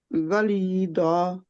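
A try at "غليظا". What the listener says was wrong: जा लेकिन लंबा है, दा नहीं है ये, जा। एक क्योंकि अलिफ आ गया ना, अलिफ जब भी आएगा इनके आगे जबर, अलिफ से पहले जबर होगी या 2 जबरें होंगी। तो गलीजन की बजाय हम रोक रहे हैं तो हम एक जबर को हटा देंगे, जब अलिफ होगा 2 जबरें होंगी, एक जबर को, ये इसके ऊपर रुकने का तरीका है।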